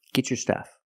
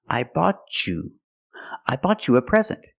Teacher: because I have a T before a Y making the Y sound, I can change the T to a ch sound like chicken and say get your stuff.